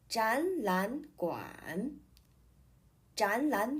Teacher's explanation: when three third tone syllables appear together both the first and the second syllables will change to the second tone